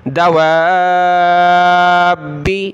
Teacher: واو کو سخت نہیں کرنا، اس کو کھینچنا ہے، با کو سخت کرنا ہے